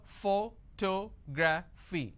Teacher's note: photography four syllables but in this case I stress on the second syllable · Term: word stress